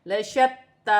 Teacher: یہاں پر تا مشدد ہے، اسے جمع و سختی کے ساتھ پڑھا جائے گا اور کھینچ کر بھی پڑھا جائے گا، جیسے لشتی۔